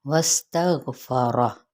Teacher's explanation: सीन सीटी, गैन पुर, रा पुर